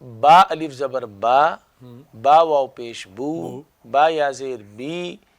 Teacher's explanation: تو اس سے مراد الف مدہ ہے، واو مدہ اور یا مدہ، یہ منہ کے خالی حصے سے ادا ہوتا ہے